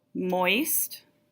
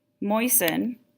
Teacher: moist you hear the T moisten you don't hear the T